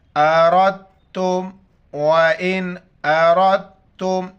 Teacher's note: تا کے ساتھ ملائیں گے کیونکہ تا کے اوپر شد ہے، بیچ میں دال ہے، دال کو پڑھیں گے نہیں، را کو ڈائریکٹ تا کے ساتھ ملائیں گے ، اور را پر زبر ہے تو را کو موٹا کر